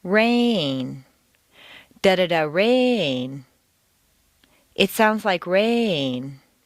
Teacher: make rain very musical and put it on two notes